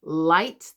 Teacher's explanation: Tongue is coming quite flat to the roof of my mouth and right behind my teeth here. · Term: L sound